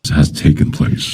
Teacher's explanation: There's so much stress that he puts on the word taken that it doesn't sound natural.